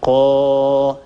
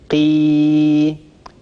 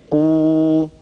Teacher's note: كل هذه الحروف تخرج من الجوف